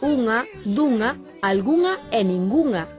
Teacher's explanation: O N velar que aparece nas palabras unha, dunha, algunha e ningunha